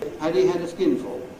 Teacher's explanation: the first ‘had’ has to have the strong form, because it begins the sentence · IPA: /hæd/